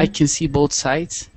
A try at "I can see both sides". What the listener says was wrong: Sides, yes.